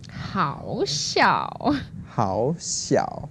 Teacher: So it's second tone and the third tone.